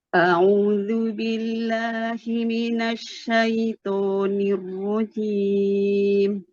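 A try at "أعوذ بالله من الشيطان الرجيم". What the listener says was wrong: Tebalkan to-nya. Syaitonir rajim.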